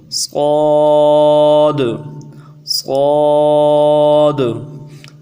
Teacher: ایک تو اس حرف کو موٹا کرنا ہے، سیٹی موٹی ہوگی، دوسرا اخیر میں قلقلہ ہوگا